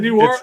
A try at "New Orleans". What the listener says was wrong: No, it's pronounced Nolans. Nolans, baby. Nolans. It's one word, Nawlins. Nolans.